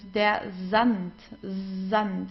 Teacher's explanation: Then whenever we have an S and then comes a vowel after that, like here, it starts with an S and then comes a vowel, we pronounce the S like in the English Z